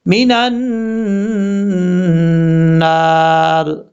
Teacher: نون کو جب نون سے کنیکٹ کریں گے تو یہاں نون مشدد کا غنہ ہوگا، ایک الف کی مقدار